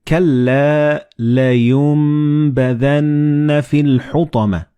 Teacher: and bat when they follow one another in the same word you don't pronounce noon or ba but you pronounce meme · So the noon and ba, they will be assimilated together and you will pronounce them as meme.